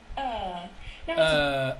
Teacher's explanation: The schwa, but it's a little bit longer. Longer, طويل.